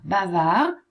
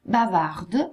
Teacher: Bavard, maschile senza la D, bavard al femminile con la D.